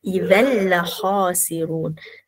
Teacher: tanwin tu terus masuk ah ke dalam huruf lam. Idgham tu maksudnya masuk. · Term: tanpa dengung, Idgham bila gunnah